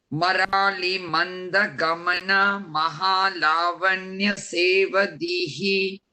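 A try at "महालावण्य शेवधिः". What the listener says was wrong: Sevadhihi. Yeah, there is no dirgham at the end.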